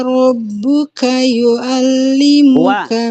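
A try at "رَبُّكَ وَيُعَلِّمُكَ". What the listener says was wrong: Ada wawunya tadi. Rabbuka wa. Rabbuka wa yu'a. Ulang.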